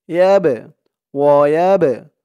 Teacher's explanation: বাটা কলকলার হরফ ধাক্কা দিয়ে পড়তে হবে